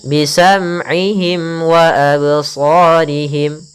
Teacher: mim mati bertemu wau izhar syafawi jelas suara mimnya tidak boleh ditahan